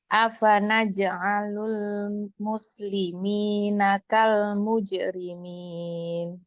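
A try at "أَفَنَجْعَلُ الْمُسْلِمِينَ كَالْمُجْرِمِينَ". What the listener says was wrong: Nah, kal mujrimin. Jangan ada hamzahnya. Kal mujrimin. Disambung terus.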